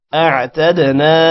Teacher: تا دال کے ساتھ ملے گا قلقلہ ہوگا